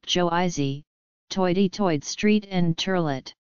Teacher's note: the vowel sounds of words like girl and of words like oil became a diphthong. This is often misperceived by speakers of other accents as a reversal of the ER and OI sounds, so that girl is pronounced goil and oil is pronounced earl.